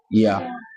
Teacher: یا کا مخرج یہ ہے کہ زبان کا بیچ اور اوپر کا جو تالو ہے وہاں سے لگانا، یہ اس کا مخرج ہے، ٹھیک ہے انشاءاللہ۔